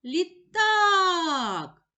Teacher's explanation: поділимо слово на склади лі так визначимо наголос покличемо слово літак наголос падає на другий склад на склад так